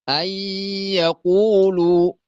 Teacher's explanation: ግን ይችን ኑኗን ከያ ጋር እንጨፈልቅና እንዳንድ ሸዳ ይሆናሉ ማለት ነው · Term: ኢድጋም